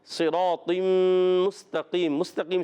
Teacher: مستقیم سین باریک رکھیں، تا کو باریک رکھنا ہے۔ · تنوین کو میم سے ملائیں گے، طا کو میم سے ملائے، تنوین کے بعد میم آ جائے نون ساکن تنوین کے بعد تو ادغام مع غنہ ہوتا ہے، یہاں پر بھی ادغام مع غنہ ہوگا، غنہ کریں گے ایک الف کا۔